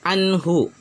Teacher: Nun sukun bertemu dengan ha, nunnya dibaca jelas, ha-nya juga dibaca jelas. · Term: Izhar halqi